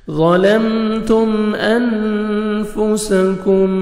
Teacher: ظا کو موٹا کر کے پڑھیں گے، میم ساکن کا اظہار ہے، جلدی پڑھیں گے، تا کو باریک پڑھیں گے، آگے میم ساکن کا اظہار ہے، جلدی پڑھیں گے۔